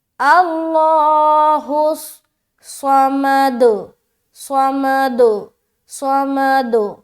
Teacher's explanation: حس حس حس سواد موٹا بھی اور سیٹی والی صفت بھی تھوڑی ظاہر ہوگی، لیکن جب صوت کو ادا کرتے ہیں، صوت کی ادائیگی میں صفت استعلا کا خاص خیال رکھنا ہے، یعنی کہ موٹا موٹا پن معلوم ہونا چاہیے